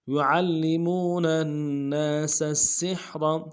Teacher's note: يعلمون الناس السحر ناسا میں نون کے ساتھ الف مدہ ہے، ایک الف دال میں کھینچیں گے، سین کو اگلے سین کے سامنے لانا ہے، سیٹی کی ادا کرتے ہوئے، باریک ادا کرتے ہوئے، سین کے اوپر تشدید زور دیں گے، اور سین کو ہا کے سامنے لائیں گے، ہا کو گہرے سے ادا کریں گے، اور را کو موٹا کریں گے۔